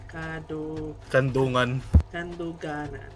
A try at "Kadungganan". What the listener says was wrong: There's no N between that.